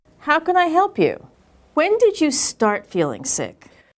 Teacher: when she asked a question that began with when or how, her intonation was falling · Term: falling intonation